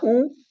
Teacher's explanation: ऊ बोल रहे हैं, गोला बन रहा है ओठ का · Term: वृत्तमुखी